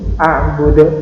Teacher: Karena ini di akhir ini disukunkan atau diwakafkan berhenti, maka ini menjadi bacaan qalqalah, dibaca mantul